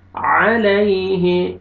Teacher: عین کو اپنے مخرج سے ادا کریں گے، تاکہ حمزہ میں مکس نہ ہو آواز ، علیہ یا لین ہے یا ساکن سے پہلے فتحہ نرمی · یا لین ہے یا ساکن سے پہلے فتحہ نرمی سے ادا کریں گے